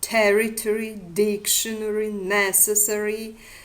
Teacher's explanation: The accentual patterns of the words territory, dictionary, necessary in American variant of English language with the primary stress on the first syllable and the tertiary stress on the third